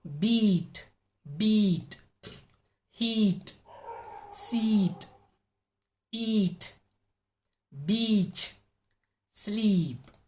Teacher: five long single vowel sounds they are usually stretched